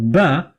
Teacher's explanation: ba is a plosive sound produced by using two lips